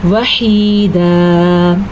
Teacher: دال دو زبر دن ایک الف بننے کی وجہ سے کھینچ کے پڑھیں گے